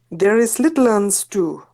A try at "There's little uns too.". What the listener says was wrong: Very good. Well done.